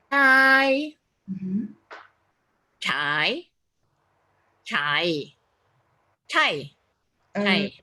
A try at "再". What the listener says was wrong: Kalau yang saya dengar agak ada H ya. Jadi jangan pakai H. Dia H itu karena lidahnya diangkat, bukan ada angin. Tadi pas baca kayaknya tambahin H ya.